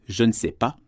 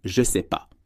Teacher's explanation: À l'écrit, vous voyez « je ne sais pas », mais à l'oral, la plupart des Français diront « je sais pas » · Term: contractions